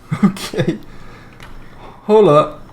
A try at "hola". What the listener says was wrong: The H is silent.